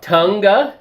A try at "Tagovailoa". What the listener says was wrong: There's no N in it. It's Tagovailoa. Tagovailoa.